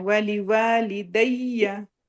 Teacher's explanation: और दैया पे दैया नहीं कहना, या के अंदर हा की आवाज मिक्स नहीं होनी चाहिए, सिर्फ प्रेशर से या पढ़ना है